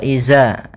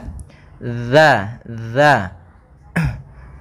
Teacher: Huruf dzal yaitu makhrajnya adalah ujung lidah kita menempel dengan gigi seri atas sehingga kita baca za.